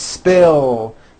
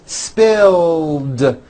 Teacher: Spill ends with a voiced L sound.